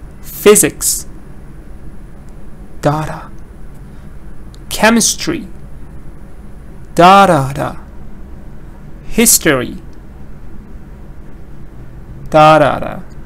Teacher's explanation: Physics, chemistry, history, stress is on the first part.